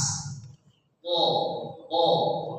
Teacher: ujung lidah kita ditempelkan ke gusi atas